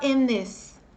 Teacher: o N antes do T ou do TH, dependendo do som do TH, às vezes ele abafa, ele faz o TH sumir. Então, emenda o N do in com o I do this e fala in this.